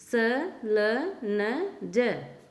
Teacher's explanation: वत्स, दांत की जड़, उच्चारण स्थान है एक दांत की जड़ों में से इनकी आवाज़ निकलती है। स, ल, न, ज।